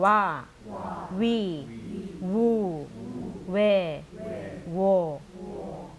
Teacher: 우 발음도 우라고 안 했고 우라는 그 세게 발음 안 했죠. 우 하고 길게 해줬죠.